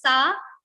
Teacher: this is dantya sa, to touch your teeth and produce this sa